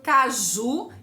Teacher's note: Caju é uma palavra oxítona, a última sílaba é a tônica, o ju, mas nós não temos essa terminação lá nas oxítonas.